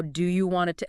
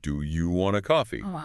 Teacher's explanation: do you want it kind of melts together into wanna?